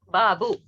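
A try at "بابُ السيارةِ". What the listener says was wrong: बाबू सैयारती, मिलाएंगे नहीं? मिला के पढ़ के बताना है आपने।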